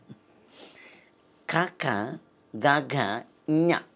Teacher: దాన్ని కంఠ్యాలు అంటారండి కంఠాన్ని ఓపెన్ చేస్తే గాని పలకలేం